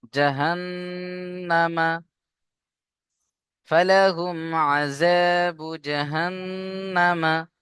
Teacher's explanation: এখানে দেখেন, জিম জবর জা, হা নুন জবর হান, নুনের উপরে তাসদীদ অজীব গুন্না, আমরা এখানে গুন্না করব। জাহান, নুন জবর না, জাহান্না, মিম জবর মা, জাহান্নামা, ফালাহুম আযাবু জাহান্নামা। · নুনের উপরে তাসদীদ কে শুধু একালিফ গুন্না করবেন, কিন্তু একালিফ টান হবে না, উপরে হারাকাত আছে, জলদি পড়তে হবে।